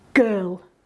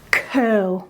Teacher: but the actual sounds we're using are exactly the same and the only difference is whether or not we voice while making that movement of our mouth above the larynx curl girl the movement is all exactly the same it's just